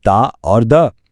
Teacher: जबान और दांतों की मदद से अदा होने वाले लिसानी हरूफ